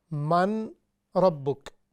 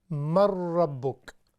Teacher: اس طرح ملانے کو کہتے ہیں کہ دونوں حرف ایک مشدد شدت کے ساتھ پڑھے جانے والے حروف یعنی اس طرح کا حرف پڑھا جائے، جیسے من ربک۔ اب ہم نون کو کھا جائیں گے چونکہ ساکن ہے، ہم پچھلی جو میم ہے اس کو را کے ساتھ ملائیں گے تو یہ ہو جائے گا مر ربک۔ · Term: ادغام